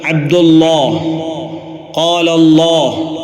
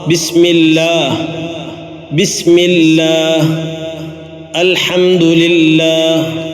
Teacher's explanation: അല്ലാഹ് എന്ന ജലാലത്തിൻ്റെ നാമത്തിൽ മാത്രം ഫത്ഹിനോ ലമ്മിനോ ശേഷം വരുമ്പോൾ കനപ്പിച്ചാണ് ഉച്ചരിക്കേണ്ടത്.